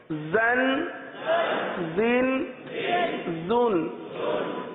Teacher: دونوں دانت کو آپس میں ملاتے ہیں زا میں، اور زبان کی نوک نیچے لگاتے ہیں، نیچے کے دانتوں کے حصے پر لگاتے ہیں